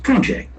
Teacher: the noun pronunciation will have accent on the first syllable